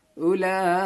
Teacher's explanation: حمزہ واو پیش او، لام کھڑا مد زبر لا، اولا. لام میں دیکھیں گے کھڑا زبر بھی ہے اور بڑی مد بھی ہے، اس کو کھینچنا ہے 5 الف کے برابر